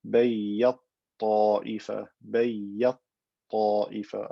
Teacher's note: I've merged the ta into the ta, creating a ta with shadda. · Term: idgham kabir